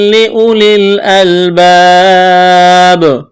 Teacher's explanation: یہاں جب وقف کریں گے اس آیت پر تو آخر والے حرف با کو ساکن کریں گے، با جب ساکن ہو جائے گی تو با پر قلقلہ کریں گے